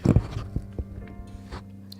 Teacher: the garage if you've seen it right it's a vocal fry my voice is not engaged at all but I'm making sounds by putting the air through my vocal cords while they're basically closed